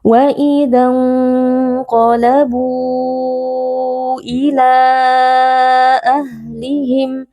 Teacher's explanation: Di sini mad tabi'inya adalah waw sukun yang sebelumnya berharokat dhammah bu, bertemu dengan hamzah di dalam dua kata, yaitu pada kata ila. Maka di sini mad jaiz munfasil kita baca panjang 4 atau 5 harokat.